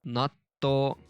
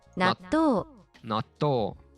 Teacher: This small two makes consonants of the to, like t sound, longer. So it becomes natto.